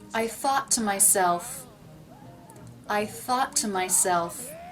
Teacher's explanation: I'm pronouncing to, t, with a true T because the word before ends in a T. Notice though I am not pronouncing two T's.